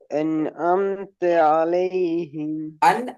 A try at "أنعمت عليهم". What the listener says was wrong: அம்த அது பிழை. ஏன் பிழை தெரியுமா? ஐனுக்கும் அலிஃபுக்கும் உள்ள முக்கியமான வேறுபாடு என்ன? அலிஃப உச்சரிக்கிற நேரம் முன்னாடி இருக்கிற எழுத்திலிருந்து தெளிவாக வெளிப்படுத்தி வேறுபடுத்தி உச்சரிப்போம் அலிஃப்.